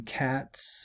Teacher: because cat ends in an unvoiced sound the plural s is pronounced s